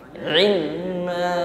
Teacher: Pengucapan ain diiringi dengan tawassut, dilunakkan